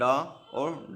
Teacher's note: और अगला इक्षिप्त, इनके उच्चारण में जीभ के ऊपर उठकर झटके के साथ नीचे को लाया जाता है